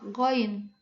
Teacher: goin yaitu bunyi langit-langit belakang